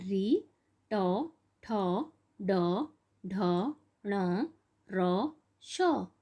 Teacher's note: इन वर्णों का उच्चारण मूर्धा स्थान से होता है।